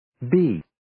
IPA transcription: biː